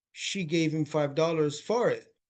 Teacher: the word that should be emphasized is dollars, because that's a noun